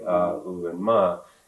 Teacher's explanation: it does begin with an a sound at the back of your throat